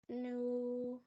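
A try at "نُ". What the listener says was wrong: Why you stretching it? Do you stretch it or not? Why? Because it's known, so you stretch it. Is that the reason? What is the sign on that? So how do we read the Fatha Kaswa Dhamma?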